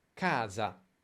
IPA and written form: ˈka:za (casa)